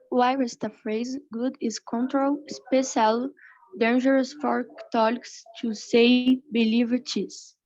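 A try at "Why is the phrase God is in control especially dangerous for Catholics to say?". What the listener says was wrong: Now, to pronounce in English new words, you want to slow down some and make sure you pronounce every vowel, every consonant. So first of all, why is the phrase, I think you said good, but it's God.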